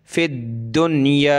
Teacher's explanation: दाल को सख्त करेंगे तशदीद की वजह से